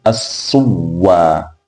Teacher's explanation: Herufi ya nyuma yake ni wau, kwa hiyo itabadilishwa kuwa ni wau, kisha tutaichukua hiyo wau tunaiingiza katika wau ambayo ni ya asili maa tashdid, kwa hiyo itakuwa ni as-suwa.